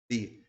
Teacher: quando você observa a letra B faz a letra B tá vendo que o Lábio fecha